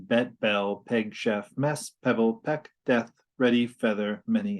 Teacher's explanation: this vowel is mid front and unrounded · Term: epsilon